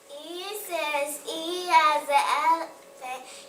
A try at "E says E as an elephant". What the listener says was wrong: No, don't say E. It says. There you go.